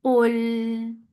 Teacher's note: قاف is heavy, lam is light. For Dhamma, circle lips attached with lam. Lam will get sifa of tawassut and keep your lips straight on lam.